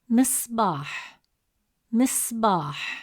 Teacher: So the sound pauses briefly without a vowel. You'll notice a quick still moment right after sod. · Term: sukun